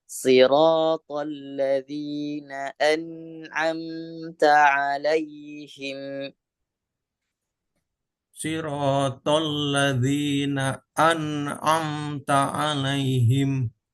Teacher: Nun yang sukun ditahan mim yang sukun juga ditahan satu harakat